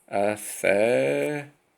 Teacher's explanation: you don't pronounce the L, you turn it into a T-H